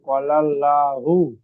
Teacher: আল্লাহ শব্দের ডানদিকে জবার এসেছে তাই আল্লাহর লামকে পুর করে পড়তে হবে